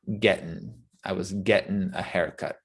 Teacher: also the g is left off